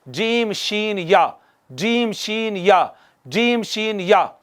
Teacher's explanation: वस्ते ज़बान और ऊपर का तालु मिले तो, यहाँ से हरूफ शजरिया अदा होते हैं